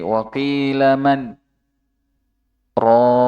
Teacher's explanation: Terdapat sakta antara nun sukun dan ro sehingga menghalangi terjadinya idgham.